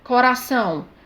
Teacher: a sílaba tônica é a última é uma palavra oxítona